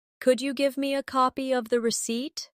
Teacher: Could you becomes could ya in casual speech.